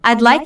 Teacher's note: Listen for the D in I'd like. This means I would like, which is very different from I like.